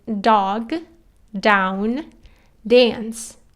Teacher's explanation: D is unaspirated, so you just say dog, down, dance. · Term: D sound